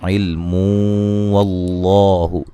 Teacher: علم جب وقف کریں گے میم کو بھی ساکن کر دیں گے. ٹھیک ہے، ملانے کی صورت میں نون تنوین کا ادغام ہوگا مع الغنہ